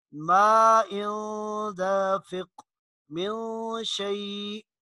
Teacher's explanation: बल्कि नून की आवाज़ नाक में ले जाकर इख्फा करके पढ़ेंगे, उस नून को छुपा कर पढ़ेंगे